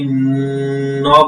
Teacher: ন বলছি এই যে ন বলছি এই যে ন যে বললাম এই ন টা বলতে আমার জিহবাটা কিন্তু উপরে লাগছে এইটাই হচ্ছে কিছুক্ষণ ধরে থাকা সেটা হচ্ছে গুন্না নাকের ভিতর গুনগুন করাকে গুনগুন করে আওয়াজ করাকে গুন্নাহ বলে এখন